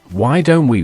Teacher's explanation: Why don't we naturally becomes why don't we with a held t sound connecting to we